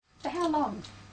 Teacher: the doctor says for how long this is a question too but it has a falling tone a falling tone is used with information questions there are questions